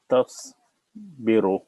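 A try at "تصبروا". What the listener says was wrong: Only one thing is this ta, you made it heavy. So you kind of said tasbiru. You want to say ta, tasbiru. Keep the ta.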